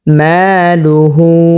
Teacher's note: মা এখানে আমরা 1 আলিফ পরিমাণ টান করব, জবরের বাম পাশে খালি আলিফ আসার কারণে মধ্যে তবাই হয়েছে, 1 আলিফ পরিমাণ টান করে পড়তে হবে।